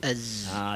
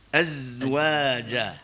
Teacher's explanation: Sin, sad, zai. Zai tu jangan bagi bunyi angin. Dia bunyi az. Sebab dia huruf jahar. Huruf yang tanpa angin.